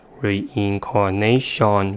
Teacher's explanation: The vowel in the last syllable reduced to the first schwa sound because it's in the unstressed syllable